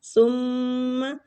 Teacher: ثم میم مشدد ہے غنہ کریں گے